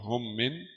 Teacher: Mim sakinah mim bersukun mudghamah dimasuk dalam mim fil mimil maksurah dalam mim berharakat kasrah dengan ghunah dua harakat. Mim bersukun dimasuk dalam mim berharakat kasrah dengan ghunah dua harakat. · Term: idgham